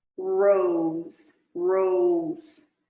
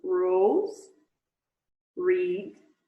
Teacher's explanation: esse R retroflexo, que é o mais comum do inglês, ele pode estar no começo, como em rose, read